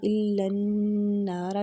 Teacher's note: نون مشدد پر غنہ کریں گے، نون کو کھینچیں گے۔